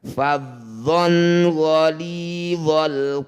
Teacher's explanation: Fathah tanwin bertemu ghain disebut bacaan izhar halki. Bunyi fathah tanwin baca jelas, dhon, tidak usah diganti-ganti dan tidak usah didengungkan.